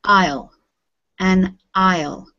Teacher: we don't pronounce the s in this word